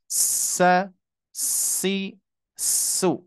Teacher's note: kalau misalkan huruf sin, as-shafirnya desisanya kuat ya.